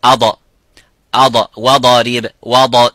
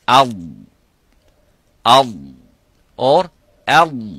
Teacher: the dad does not have shidda, does not have qalqala. The sounds does not stop completely by saying ad.